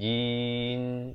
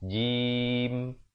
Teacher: Rapatkan dan tahan sekejap baru buka. Baru menyempurnakan bunyi mim itu.